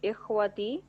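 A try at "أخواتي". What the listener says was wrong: اخواتی، اس واو کو ضرور کھینچیے گا، اس کی وجہ بتاؤں گا. دیکھیں، اخوتن اور اخواتن، ان میں دونوں میں ڈفرینس کرنا بہت ضروری ہے.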